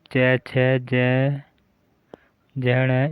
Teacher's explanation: च वर्ग के उच्चारण में वायु कुछ घर्षण के साथ निकलती है, इसलिए इस वर्ग के व्यंजनों को च, छ, ज, झ स्पर्श संघर्षी व्यंजन कहते हैं।